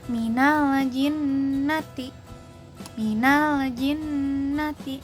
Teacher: Nah, pelafalannya itu sifatnya ini menguat dan dibaca dengan durasi 2 harokat pada saat dilafalkan si nun dan mim tasydidnya. Nah, gunah ini tuh dari rongga hidung didengungkan dan durasinya tadi 2 harokat